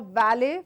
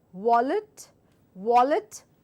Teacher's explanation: valet, where I bite my lower lip and I give out the sound valet. The second word is your wallet, as if I'm about to whistle, wallet, wallet, valet, wallet, valet.